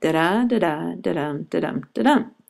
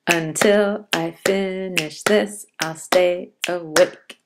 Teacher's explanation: So one IAM would be a da-da, and 5 of them go da-da, da-da, da-dum, da-dum, da-dum. We have an unstressed syllable followed by a stressed one. Until I finish this, I'll stay awake. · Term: iambic pentameter